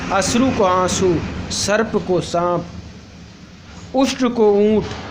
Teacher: शब्द में अनुनासिकता न होने पर भी उसे अनुनासिक रूप में उच्चारित किया जाता है